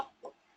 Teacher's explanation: जुबान की जड़ ऊपर के मुकाबिल तालू के करीब जाएगी। कौन से तालू? तो ओनली नरम तालू। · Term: ऑफ